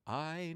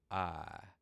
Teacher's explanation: In a Southern accent, we kind of take away a lot of the diphthongs.